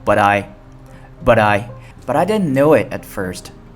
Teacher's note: 中间是很放松的一个t 只做口型不发音，如果后面有元音就会连起来